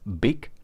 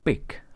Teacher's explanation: So, itu adalah cara mengucapkan suara B dalam bahasa Inggris dengan mana kita bandingkan pada suara P. Yang mana keduanya sebenarnya memiliki tempat produksi yang sama, yaitu di bibir